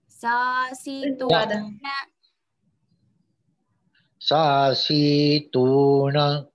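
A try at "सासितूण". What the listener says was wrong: Si is Hraswa Mahodaya.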